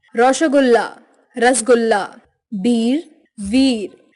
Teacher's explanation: बंगाल के लोग प्रायः स का उच्चारण श की तरह व का उच्चारण ब की तरह तथा शब्दों पर औ का प्रयोग करके उच्चारण करते हैं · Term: बंगाली उच्चारण